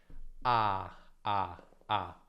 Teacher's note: Questa è una vocale aperta, centrale e non arrotondata. La lingua si trova in basso, ed è la vocale più aperta dell'italiano, e in posizione centrale. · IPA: /a/